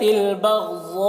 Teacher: غین کو پر پڑھیں گے اور غین میں قلقلہ نہ ہونے پائے